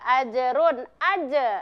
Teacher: Jadi huruf ja, huruf jim juga dipantulkan termasuk pada qalqalah sugra ya. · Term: qalqalah sugro